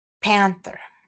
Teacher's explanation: here we have the aspirated P. And then we have the dental N.